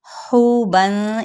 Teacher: ہا وسط حلق سے ادا کرتے ہوئے واو مدہ کا قاعدہ ہو رہا ہے